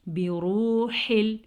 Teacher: ہا کے مخرج کا دھیان رکھیں گے، یہ والا ہا سینے سے نکلتا ہے